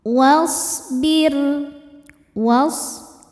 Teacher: Ini alifnya hamzah wasol nggak usah dibaca, wawunya pendek. Jadi ini bukan pemanjang ya, langsung ke yang sukun.